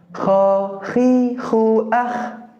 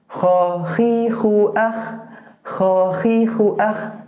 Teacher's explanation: Terasa getarannya, gesekannya. Dan dia terletak di tenggorokan bagian atas atau ujung, adnal halqi. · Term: huruf Kho